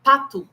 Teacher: O som P de pato, esse P, né, que sai um arzinho da nossa boca, eles não têm isso na língua árabe.